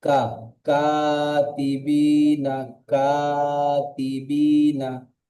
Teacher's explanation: এটি পুর হরফ নয়, মুখ স্বাভাবিক অবস্থা উচ্চারণ হবে।